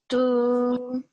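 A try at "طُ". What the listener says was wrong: Round your mouth a little bit more. Tu.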